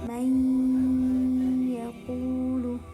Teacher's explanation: Pengertiannya, apabila ada nun sukun atau tanwin bertemu dengan salah satu huruf ya, nun, mim, waw, maka cara bacanya harus digunnahkan atau dimasukkan dengan dengung. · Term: idgham bil gunnah